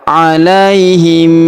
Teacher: Kemudian huruf mim sukun bertemu huruf B. Maka mim sukunnya melebur masuk ke huruf B. Kita tahan dan kita dengungkan dua sampai 3 harakat.